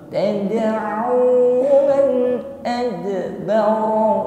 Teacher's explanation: Huruf dal sukun, maka jangan ragu-ragu mengeluarkan bunyi yang memantul atau sifat qalqalah. Tadi ringan saja.